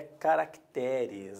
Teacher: a sílaba tônica está no té, não há mais acento.